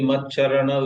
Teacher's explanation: with both cha being Alpaprana